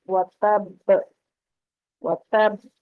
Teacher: وَتَبْ جہاں پر با جو ہے وہ حروف قلقلہ میں سے ہے تو پلٹ کر آواز آئے گی جب اس کو، اور تب با ہے تو اس کو جب وقف کریں گے تو وَتَبْ وَتَبْ تھوڑی دیر رکیں گے، پکڑ کے رکھیں گے مخرج کو اور پھر چھوڑیں گے.